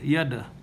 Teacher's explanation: Yada, because the dal is the kalkala fil dal, this dal has kalkala because it is sakin, so you have to echo it